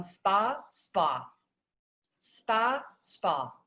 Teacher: And if you can see this, it's very subtle, but there's just a little rounding that's happening on my lip when I'm doing the New York ah